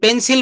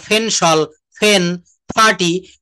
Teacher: পি সাউন্ডকে প না কিন্তু একটু বেশি বাতাস বের হবে। ফ এর মত। টি সাউন্ড ঠ এর মত এবং সি কে কিউ এই সাউন্ড গুলাকে খ এর মত উচ্চারণ করব। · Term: এসপিরেটেড সাউন্ড